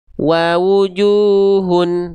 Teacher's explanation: Oke, kalau ada huruf berharokat dhammah ketemu sama wawu mati atau wawu sukun, maka huruf yang berharokat dhammahnya itu dibaca vokal U-nya 2 kali harokat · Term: mad tabi'i